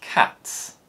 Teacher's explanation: when the es suffix follows an unvoiced consonant it produces the s sound